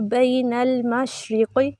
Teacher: قاف موٹا کریں گے، زیر دیتے ہوئے باریک نہیں کرنا